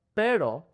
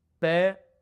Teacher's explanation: the tongue comes up really fast. It hits the top of your mouth and it comes right back down.